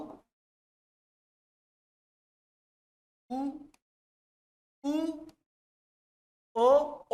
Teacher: अब देखो आ के बाद ऊ बोलो, अब देखो बोलो कि ऊ में होठ, तो कॉन्सेप्ट क्या है कि वह, तो होठ को सोचो ही मत, आप पूरा फोकस करो जीभ पर। भले ऊ बोल रहे होठ ऐसा रहे ऊ, लेकिन जीभ का कौन सा भाग एक्टिव? ऊ पीछे। तो ऊ, सॉरी मतलब छोटा ऊ, ऊ, ऊ, ओ भी बोलोगे, भले होंठ को छोड़ो, जीभ पर फोकस करो।